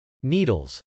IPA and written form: nˈidəlz (needles)